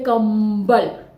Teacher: प वर्ग का म है, पांचवा वर्ण म होता है, इसलिए कंबल में भी जो अनुस्वार है उसकी ध्वनि म की साउंड आ रही है , म साउंड में आ रही है, दिख रही है कंबल